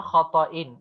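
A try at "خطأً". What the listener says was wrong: خطئن، حمزہ کے ساتھ، عین نہیں، خطئن.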